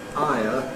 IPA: ˈaɪə